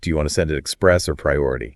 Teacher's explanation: That rising intonation on or, it signals to the customer that they have a choice to make.